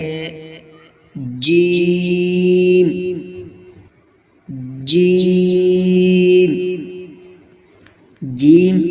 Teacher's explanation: ادا کرتے وقت زبان کا درمیانی حصہ جب تالو سے لگے تو جیم ادا ہوتا ہے